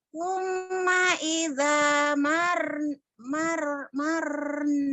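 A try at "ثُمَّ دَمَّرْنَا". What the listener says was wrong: Bukan summa ida. Summa damarna. Summa damarna. Bukan ida. Summa damarnal akharin.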